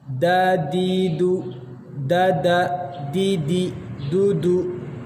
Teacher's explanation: lidah ditempelkan di langit-langit agak bagian depan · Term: dal